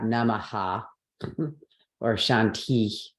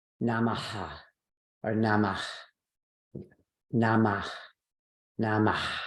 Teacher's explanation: put a breathy sound, an aspirated sound on the end of the word. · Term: Visarga